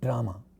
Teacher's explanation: When we say English word drama, we are using our d, which is a retroflex sound